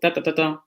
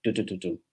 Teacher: So this is vakavila, so ta ta ta ta, going up, and this is tukavila, so tu tu tu tu, just kind of low.